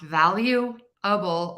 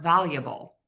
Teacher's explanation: so I'm really reducing that middle syllable there